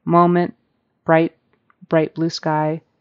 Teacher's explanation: words is pronounced differently than T at the beginning of words T at the end the end of the word is usually just very unaspirated it's just kind of there like moment right bright blue sky